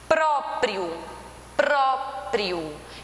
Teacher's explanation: o pró, ele é mais forte na pronúncia. Então, ele é a sílaba tônica e as demais são chamadas de átonas.